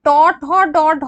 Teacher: এগুলো হচ্ছে সব মূর্ধা থেকে, মানে জিভের সামনের ভাগটা থেকে উচ্চারিত হয়েছে। জিভের সামনের ভাগটা কি হচ্ছে, উল্টে যাচ্ছে, তাই তো, এটা হলো জিভার সামনের ভাগ, অগ্রভাগ উল্টে যায়, সেটাকে আমরা বলে থাকি মূর্ধা। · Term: মূর্ধন্য